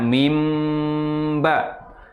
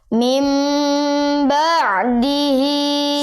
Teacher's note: Nun sukunnya ya diubah menjadi m, menjadi mim. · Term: Iqlab